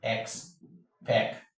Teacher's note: Remember, if a word ends with any of these ION, a polysyllabic word ends in IC, a polysyllabic word ends in IAL, a polysyllabic word ends in IAN, your stress falls on the penultimate syllable.